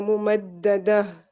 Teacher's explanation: پھر آگے دال فتحہ 1 کاؤنٹ ہوگی. آگے تا مربوطہ جو ہے وہ ہا ساکن بن جائے گا